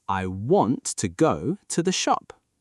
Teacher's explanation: The words I, to, and the, are softer.